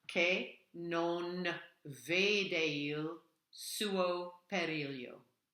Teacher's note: So that CHE is a K sound, which is different than Spanish.